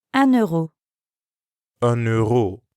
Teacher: listen to the liaison between un and euro